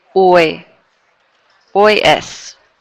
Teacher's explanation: notice how I'm not pronouncing that H